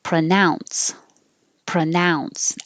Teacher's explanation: the pro is changing to pra because it's not stressed